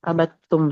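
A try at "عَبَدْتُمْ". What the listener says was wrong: Nah, itu telnya kol-kolannya hilang, melebur dengan tak.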